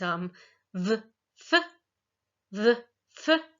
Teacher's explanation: So labiodental, we are putting our lips to our teeth, or really our teeth to our lips here to make the v, f sound. Okay, so that's the place of articulation.